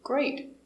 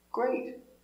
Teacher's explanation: And also intonation goes up with the first word.